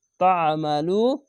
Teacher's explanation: আইনটিকে একটু গলা চিপে পড়বেন